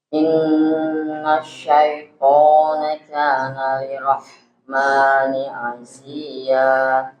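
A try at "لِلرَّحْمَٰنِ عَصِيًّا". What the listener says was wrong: Jadi tasdid pada huruf ra begini. Lirrahmani asiya. Lirrahmani asiya.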